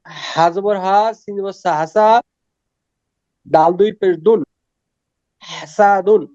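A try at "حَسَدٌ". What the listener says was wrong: হ্যাঁ মাশাআল্লাহ, হাসাদুন।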